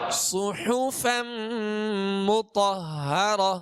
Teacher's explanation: صاد کو پر پڑھیں گے، سیٹی کی آواز پیدا ہوگی، ہا کو وسط حلق سے ادا کریں گے۔